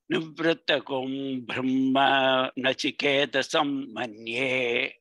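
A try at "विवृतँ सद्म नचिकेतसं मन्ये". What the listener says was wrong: Not బ్రహ్మ, it is సద్మ.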